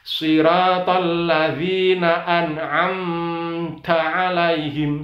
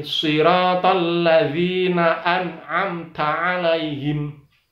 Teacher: Ada mim sukun, itu mimnya dibaca jelas. Tidak boleh ada buntutnya, tidak boleh ada ekornya, tidak boleh ada dengungnya.